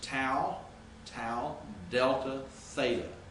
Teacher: if you say tau you're actually touching your teeth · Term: dentals